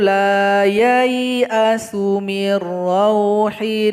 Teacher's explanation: Yang ini juga tanda bulat lingkaran atau sifir mustadir menghilangkan tanda panjang. Ya dibaca pendek langsung digabung kepada ya yang berharokat sukun.